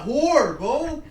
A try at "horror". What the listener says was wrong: You're just saying whore. No, it's horror. Horror. Whore?